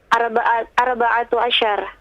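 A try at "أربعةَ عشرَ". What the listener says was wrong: Arba'ata. Bukan arba'atu. Arba'ata asyar.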